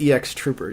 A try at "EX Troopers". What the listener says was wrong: It's not X Troopers. It is EX Troopers. EX.